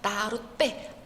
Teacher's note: 나룻배, 빼가 이제 또 쌍비읍으로 이제 발음되죠. 뒷말의 첫 소리가 그 된 소리로 나는 케이스예요.